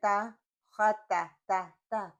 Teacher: پیچھے سے زبان کو کچھ فرق نہیں پڑ رہا، کوئی اس میں تفخیم نہیں ہو رہی، کوئی مفخمہ نہیں ہو رہا، کچھ نہیں ہو رہا.